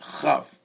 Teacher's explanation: Chaf is like grinding your tongue on your palate.